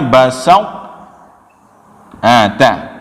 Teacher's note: sama tempat keluar ujung lidah bertemu dengan belakang gigi seri atas